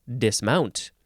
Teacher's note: you would actually emphasize the second syllable